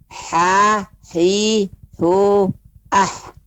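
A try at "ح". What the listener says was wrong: Nah, ketika pengucapan ha terdengar seperti huruf H jadinya, Bu. Coba kembali dengarkan kembali. Ha, ya. Nah, ini terdengar suara huruf H kecil.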